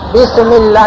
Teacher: بسم اللہ میں ایک تو سین کو بھی تیز آواز کے ساتھ بس اس کو نرم نہیں فا کی طرح نہیں پڑھنا ہے، سین تیز آواز کے ساتھ، بس، اور سین کو ہلانا بھی نہیں